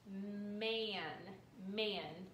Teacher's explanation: a and n together sounds like the a sounds like you're holding your nose